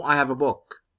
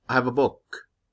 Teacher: only book is stressed because this is the noun. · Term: sentence stress